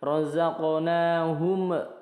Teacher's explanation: hum tidak dipantulkan tetapi sedikit ngalir. Razaqnahum yunfiqun ini ikhfa, nun sukun bertemu fa.